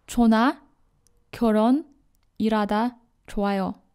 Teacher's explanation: Hyut in general should be read very softly in Korean language. You actually hardly can hear h sound in Korean language, especially when it's preceded by niun, miun, ing or real, or surrounded by vowel sounds.